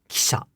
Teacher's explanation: devoicing does occur on the i. But if devoicing occurs on the i, then that downstep, kisha, the pitch is disappearing.